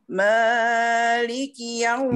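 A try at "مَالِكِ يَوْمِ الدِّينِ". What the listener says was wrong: Maknya kepanjangan, hati-hati. Maknya ayunkan. Maliki yaumiddin.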